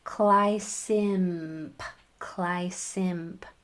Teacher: Make sure that that M, your mouth is going to form the M shape to spit out that P, but make sure that you put your vocal cords to use on that M sound